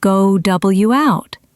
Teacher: In go out, there is a W sound inserted. Go W out. This is perfectly normal and happens all the time. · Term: intrusion